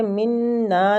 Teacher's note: منا نون مشددہ غنہ کے ساتھ کھینچیں گے